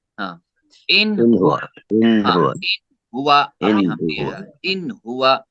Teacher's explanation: ظاہر کرنا ہے، یعنی ناک کے اندر روک کے نہیں رکھنا ہے، ظاہر کرنا ہے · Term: اظہار